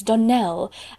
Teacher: the correct pronunciation of our name is Donell Accent on the last syllable